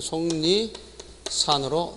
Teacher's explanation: 일단 1차적으로 속 뒤에 리을이 니은으로 바뀌죠. 그러다가 다시 니은을 모서 앞에 기역이 이응으로 돼서 최종적인 소리는 속리산으로 나게 된다라는 사실을 기억할 필요가 있습니다.